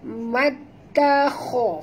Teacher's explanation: kho tebal ya, kerana kho adalah huruf isti'la ya